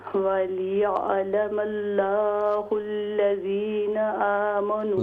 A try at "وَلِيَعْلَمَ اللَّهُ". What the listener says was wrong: لام کو اور بھی موٹا کیجیے فل ماؤتھ سے.